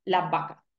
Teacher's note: si tenemos eh frases tipo las vacas eh la realización mayoritaria va a ser la vaca eh simplemente con una B